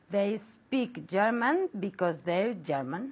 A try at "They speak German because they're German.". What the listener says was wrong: Very good, very good. And very good pronunciation.